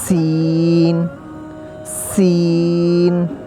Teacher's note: سین کو ہم نے سیٹی کی آواز سے پڑھنا ہے، تھوڑے سے سیٹی مار کے